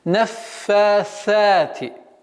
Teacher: Потому что фа фрикативный звук, то есть продолжение струи воздуха проходит, также са фрикативный, но чтобы не перешло свистящий звук син.